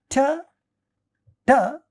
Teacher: Ta is a retroflex sound.